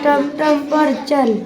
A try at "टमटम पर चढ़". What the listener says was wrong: चल नहीं चढ़, टमटम पर चढ़।